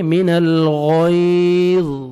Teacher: غین کو آپ نے موٹا کر کے پڑھنا ہے